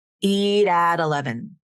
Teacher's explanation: the flap is going to move over to the beginning of that next word because it's going to follow that CV linking rule. So it sounds more like the 11 instead of 11.